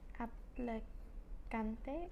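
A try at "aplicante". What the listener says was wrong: Applicante. And remember, we want to pronunciar the vowels, right? So it's not apple, it's applicant in English, but the vowel I is pronounced E. Applicante.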